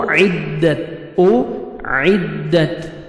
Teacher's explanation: تا کا ہلکا سا ساؤنڈ آئے گا، لائٹ سے ساؤنڈ، ڈبل ساؤنڈ نہیں آنا چاہیے